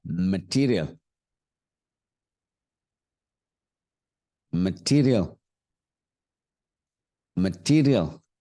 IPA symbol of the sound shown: ə